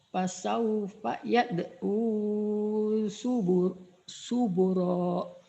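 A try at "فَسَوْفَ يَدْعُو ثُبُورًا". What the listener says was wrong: Bunya panjang subura, diulang lagi ibu. Fasaufa yad'u subura.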